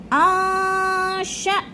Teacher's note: اب نون ساکن ہے، اس کے آگے شین حروف اخفا میں سے آ گیا تو ادھر اخفا کریں گے، آواز کو ناک میں چھپا کر پڑھیں گے.